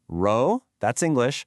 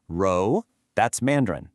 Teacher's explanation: It is not the English R. To make this sound correctly, your tongue needs to be flatter and further back in your mouth. It's almost like the position you'd be in to start the J sound in a word like leisure.